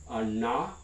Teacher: the retroflex nasal na, that would be active in many languages of Australia and the Indian subcontinent